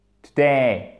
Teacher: Accent tonique sur la seconde syllabe, puisqu'il n'y en a que deux.